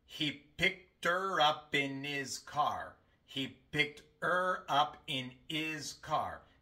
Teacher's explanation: Solamente pronunciamos la H en la palabra he, porque viene al principio del enunciado. Las otras dos palabras se pronuncian e im.